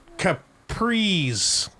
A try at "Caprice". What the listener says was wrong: You're saying it like there's a Z there, and there's just not. Caprice.